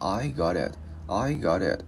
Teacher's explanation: Và cái chữ T á, mình đá lưỡi lên vòm trên it. Và mình sẽ luyến cái chữ T á, qua cái chữ Y thành chữ D tiếng Việt nhẹ